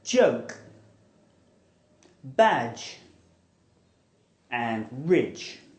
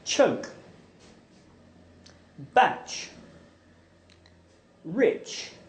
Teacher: The j is voiced and the ch is aspirated.